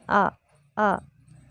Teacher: हमज़ा की थोड़ी रगड़ खाती सी आवाज़ होती है जब हम इसकी आवाज़ निकालते हैं आ।